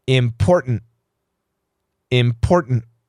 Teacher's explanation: have a t followed by an unstressed syllable with an N we stop the T sound we leave the tongue at the T position and we change to an N pronunciation so important I I go import and I stop my tongue